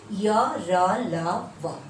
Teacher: अंतस्थ व्यंजन जो है वो उच्चारण करते समय जीभ मुंह के किसी भी भाग को पूरी तरह से स्पर्श नहीं करती है